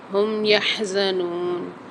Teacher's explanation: ہا کی آواز واضح ہونی چاہیے، اور نون کے ساتھ واو مد آ رہی تو ایک الف مدار کھینچ کے پڑھیں گے۔